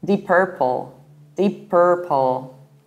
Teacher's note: in the American accent, we pronounce it like deep purple with a very strong and colored R